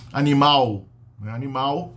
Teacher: Então não tem sílaba terminando com L em português